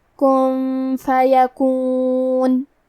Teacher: لہو کن، کلمت کن میں نون ساکن ہے، پھر حرف الفا ہے، فا حروف الاخفاء میں سے ہے اور اخفاء کا معنی ہے چھپا دینا، تو ہم نون ساکن کو چھپاتے ہوئے اور غنہ کے ساتھ یہ حکم کو ادا کریں گے۔